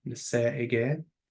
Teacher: that apostrophe there is a glottal stop because you have two vowels together.